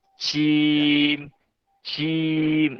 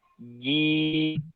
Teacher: Jim yang kurang tepat adalah dengan mengeluarkan hembusan. Contohnya jim, jim. Nah, harusnya jim bersih.